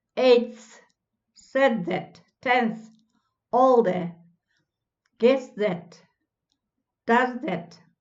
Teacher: become dental before interdental th